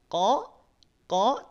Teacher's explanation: tanpa monyong tanpa manyun tanpa maju tanpa mencucu Q baru masuk pada huruf wau sukunnya dia majukan bibirnya